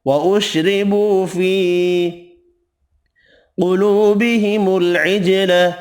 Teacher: قاف حروف مستعلیہ پر پڑھیں گے، جیم ساکن پر قلقلہ کرنا ہے، واو مدہ ایک الف کی مقدار میں کھینچ کر پڑھیں گے۔